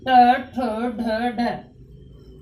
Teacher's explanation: ये हमारे जो कठोर भाग मूर्धा है उसकी, उससे टच होती है हमारी जीवा, तो ट, ठ, ढ, ढ।